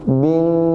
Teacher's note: dengungnya pak di situ ada satu dengung ya dalam Bab tajajwiud namanya gunah itu ditahan empat ketukan Pak empat ketukan